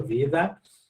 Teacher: Ela virou em espanhol vida, que aí eu não fecho totalmente a boca, eu só vibro a língua